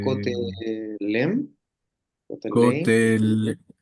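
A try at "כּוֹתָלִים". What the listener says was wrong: Cotel, Cotelim, Cotelim, Cotelim, I, sí, una I muy larga. Cotelim, Cotelim, Cotelim,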